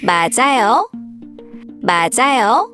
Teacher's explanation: when a syllable ends with a final consonant, called bachim, and the next syllable starts with a vowel, the final consonant moves over and is pronounced with the next syllable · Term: linking sounds